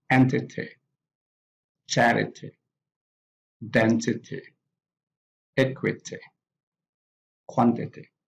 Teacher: these words have the stress on the first syllable